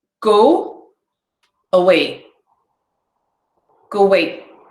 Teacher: Right, I put in an extra w sound, go away.